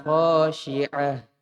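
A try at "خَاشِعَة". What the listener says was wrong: Kho-nya kotor. Khasyi'ah. Ain.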